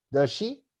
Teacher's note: We give a rising intonation at the end of it.